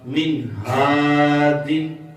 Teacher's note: حروف حلقی میں سے ہے تو یہاں پر اظہار ہوگا، گننا نہیں ہوگا